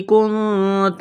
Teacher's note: نون ساکن کے بعد تا ہے، حروف اخفا ہے، غنہ کریں گے